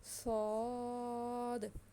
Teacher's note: صاد کو ہم نے تھوڑا سا موٹا کرنا ہے، زبان کو ہم نے تھوڑا سا ہلکا سا تالو سے ٹچ کرنا ہے